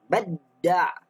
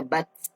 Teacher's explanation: Jangan baca bat. Hilang ta sebab dah masuk pada huruf dal. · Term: idgham